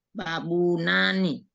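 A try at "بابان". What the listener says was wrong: bukan babunani tapi babani, langsung dipatahkan dia Ibu. Enggak usah lagi babunya. Babani, langsung gitu Ibu.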